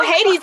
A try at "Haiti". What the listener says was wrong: Haiti, no S.